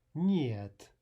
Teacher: that's a soft N because it's followed by a soft vowel